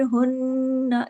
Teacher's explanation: नून पे तशदीद है, डबल नून है, गुन्ना बड़ा होगा